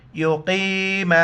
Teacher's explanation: قاف کو موٹا کر کے یا کے ساتھ ملائیں گے